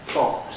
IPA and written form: fɒks (fox)